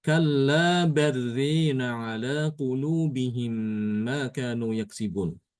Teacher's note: Alifnya itu diimalahkan. Imalah itu dia membaca antara antara fathah dengan kasrah ya. Jadi fathahnya dimiringkan sedikit atau sebagian ya separuhnya gitu.